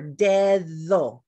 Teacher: In the Spanish language, we have that Spanish medial D. If I said the word for finger, dedo, that middle D says th of English.